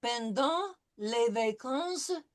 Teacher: Pendant, no pronouncing of the T